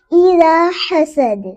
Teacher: دال پہ قلقلہ ہوگا کیونکہ دال حروف قطب جدین میں سے ہے